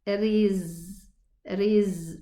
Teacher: It has rakhawa, softness. So the sound of the letter runs.